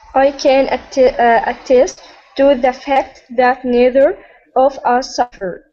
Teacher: focusing on the, that, and neither, all voiced TH sounds